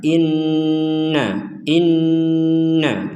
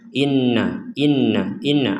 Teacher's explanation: dengung itu artinya ya rongga hidung kita tuh ada dengungan sehingga kita memberikan waktu sejenak ya minimal dua harakat ya untuk mendengungkan ini kalau dipercepat khawatir tidak ada dengungan contohnya